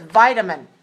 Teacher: vitamin has three syllables stressed on the first